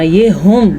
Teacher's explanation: یہ والا ہا ہے جو چھاتی سے نکلتا ہے